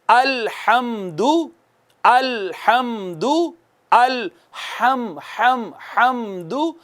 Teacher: ہا جو ہوتی ہے نا یہ وسط حلق سے ادا ہوتی ہے، یہاں سے اینڈ سے ہا ادا ہوتی ہے.